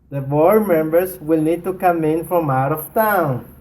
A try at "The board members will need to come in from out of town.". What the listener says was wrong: Wow. Wow is right, right? A lot more energy.